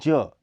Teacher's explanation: यह अल्प प्राण घोष ध्वनि है। इसका उच्चारण स्थान अग्रतालु है।